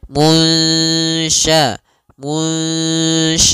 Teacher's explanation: caranya adalah kita samarkan nunnya kepada huruf syin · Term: bacaan Ikhfa